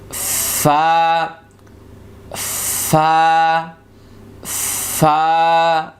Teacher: হরফ উচ্চারিত হবে আমরা দুইটি মাখরাজ করে নিচ্ছি 14 নম্বর মাখরাজ নিচের ঠোঁটের পেট সামনের উপরের দুই দাঁতের আগার সঙ্গে লাগিয়ে একটি হরফ